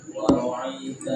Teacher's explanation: Jangan ain. Hamzah itu bukan pakai ain.